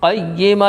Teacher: یا کے اوپر تشدید والے حرف کو 2 مرتبہ پڑھتے ہیں، تشدید کی آواز میں ایک قسم کی سختی ہوتی ہے۔